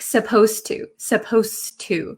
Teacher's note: when I pronounce supposed to, the D sound and the T sound become kind of like one sound. So when I speak supposed to, it doesn't sound like there's a D.